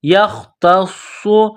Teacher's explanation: واللہ یختص، یختص، یا خا زبر یخ، تا صاد زبر تا، صاد پیسو، یختص، تا کو باریک کرنا ہے، صاد میں سیٹی کی آواز پیدا کریں